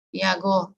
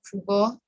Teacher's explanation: the voiceless stop pa and ka became voice in intervocalic position, that is, in between two vowels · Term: voicing